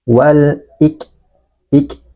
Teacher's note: lam takrif berhadapan dengan huruf hamzah huruf qamariah maka lamnya dibaca jelas